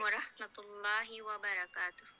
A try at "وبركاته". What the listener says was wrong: وبركاته, زیادہ منہ نہیں کھولیں, وبركاته.